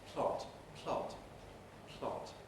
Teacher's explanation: in the case of plot the aspiration happens during the l